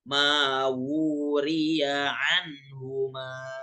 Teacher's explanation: Wu-nya itu 2 harokat ya, karena dhammahnya terbalik gitu